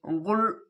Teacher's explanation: এই লামের উপরে তাসদে আছে তার জন্য গুল এরকম করে উচ্চারণ হবে একটু মোটা ভাবে